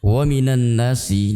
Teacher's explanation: Nun tasydid kita baca dengan mendengung